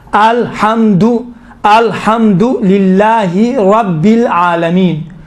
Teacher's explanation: یہ را تھوڑا سا موٹا پڑا جاتا ہے